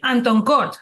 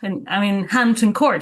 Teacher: She wouldn't pronounce those H's like sometimes Spanish people do with their H's in English. So I am in Anton Court, right?